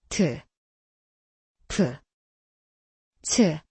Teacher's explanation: 타조, 포도, 치마처럼 공기를 시원하게 뿜어내며 발음해요. 모두 공기가 강하게 터져나오는 소리랍니다. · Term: 거센소리